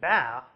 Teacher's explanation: all of the formants quickly rise up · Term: labial stop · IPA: [bæ]